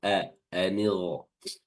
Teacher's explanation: Di sini ada huruf ghain di mana ghain ini dari tenggorokan atas atau adnul halqi dan juga memiliki sifat isti'la